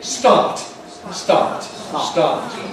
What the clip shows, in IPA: stɑːt